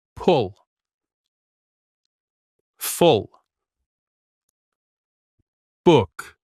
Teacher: This sound is short and a little soft. Your lips are a little round. You say it quickly. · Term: short ooh